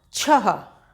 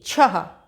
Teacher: ये है छा, छा में आहा की मात्रा जोड़ी तो क्या हो गया, छह। छा के संग हा की ध्वनि निकली